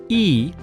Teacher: the English sound e is pronounced with the tongue in front position high in the mouth